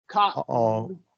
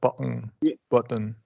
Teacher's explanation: your tongue stops but doesn't release